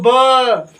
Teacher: ब बोलने में दोनों ओठ सट रहा है। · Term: ओष्ठ